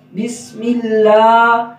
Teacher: لام اس سے پہلے جب زیر آ جائے گی تو اس وقت لفظ اللہ کو ہم باریک پڑھیں گے